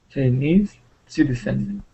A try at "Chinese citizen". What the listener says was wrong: Citizen. You tried to go low on citizen. You naturally tried to go low, but this is the stress.